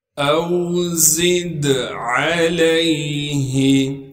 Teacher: زا کو دال ساکن سے ملا دیں گے اور دال میں قلقلہ کیا جائے گا کیونکہ دال حروف قلقلہ میں سے ہے اور دال پر ساکن آ گیا ہے۔